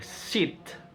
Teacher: a short lax front vowel